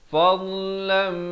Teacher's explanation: Litabtagu fad di tepi lidah dengan kiri atau kanan mengikut keselesaan. Fadlam, idgham bi gunnah, daripada fadlan jadi fadlam, dengan kedua harakat.